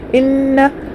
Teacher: हमज़ा के नीचे ज़ेर है, जल पढ़ेंगे। नून के ऊपर तशदीद है, घुटना होगा